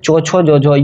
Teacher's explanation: कुछ व्यंजनों के उच्चारण में स्पर्श तथा घर्षण दोनों प्रयत्न दृष्टिगत होते हैं, ऐसे व्यंजन स्पर्श संघर्षी कहलाते हैं।